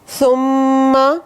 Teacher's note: یہ ادغام شفوی ہے، میم ساکن کے بعد میم متحرک